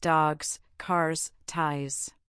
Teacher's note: Cats books. If it ends in a voice sound or a vowel, the s is voiced.